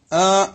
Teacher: ആ എന്നത് തൊണ്ടയുടെ താഴെ അറ്റത്തു നിന്ന് വരുന്ന ഒരു ശബ്ദമാണ് അതാണ് ഹംസ